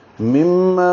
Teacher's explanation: مم میں بھی غنہ ہے، دونوں کو 2 حرکات آواز ناک کے بانسے میں لے جائیں گے. ما الف مدہ ہے، 2 حرکات لمبا ہوگا.